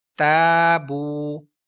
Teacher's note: یہاں پر واو مدہ ہے، واو ساکن سے پہلے پیش، 1 سیکنڈ لمبا کریں گے۔